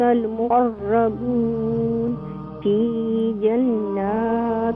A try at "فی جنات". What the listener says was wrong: کم نہ کریں فی جنات بیکاز نون مشدد ہے.